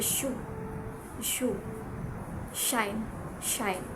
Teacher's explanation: Next is the palatal sounds, where the sounds is being produced at the roof of our mouth. So the constriction happens between our tongue and our palate · So as we notice, the constriction happens, the sound is being produced at the roof of our mouth, in our palate, and that is palatal.